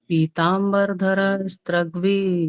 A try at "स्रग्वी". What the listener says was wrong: स्त्र नहीं है, स्त्र नहीं है, स्रग, स्रग्वी। हाँ, स्रग्वी।